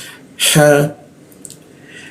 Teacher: Lalu ha, huruf ha di mana? Di jakun ya. Ha tipis ya.